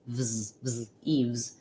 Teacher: Avoid it becoming an f and a s sound. Keep the voice on and move right from your v to your z